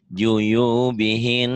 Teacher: kalau ada nun ada tasjidnya karena gunnah jadi tahan